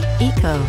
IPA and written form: i:kəu (YIKO)